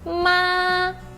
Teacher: Você não fala ma, nem ma, tá? É bem alto e contínuo.